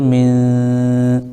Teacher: تو یہاں پر نون ساکن کے بعد حروف اخفا میں سے شین آ رہا ہے اس لیے یہاں پر اخفا ہوگا. نون کی آواز کو ناک میں چھپا کر پڑھیں گے. ایک الف کے برابر ہم کو آواز رکنا ہے